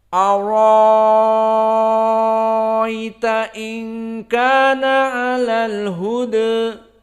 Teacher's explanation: Maka hamzah dihilangkan dan dengan isba', maka dibaca dengan al-isba', dan ya tetap ada, dan hukmul ya di sini ya madlin, maka dibaca dengan ibdalu hamzah bi alif, jadi diganti dengan alif. Hamzahnya dihapus diganti dengan alif, dan ya-nya tetap sakinah dibaca dengan hukmul madlin.